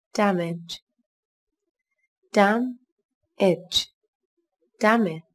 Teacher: Các bạn lưu ý, từ này có hai âm tiết, trọng âm rơi vào âm tiết đầu tiên các bạn nhé. Từ này có chứa âm e bẹt.